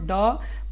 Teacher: ड मूर्धन्य अल्पप्राण व्यंजन है